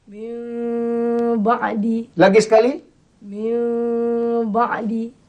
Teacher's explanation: Pertama tukar Nun kepada bunyi mim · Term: iqlab